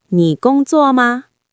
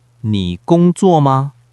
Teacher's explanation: The question particle, ma, is a neutral tone. It has no weight. It's just a ghost of a sound at the end of the sentence.